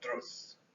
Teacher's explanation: That's a single syllable with an oo vowel.